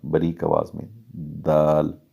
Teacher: دال نوک زبان ثناء علیہ کی جڑوں میں لگے گی تو دال ادا ہوگا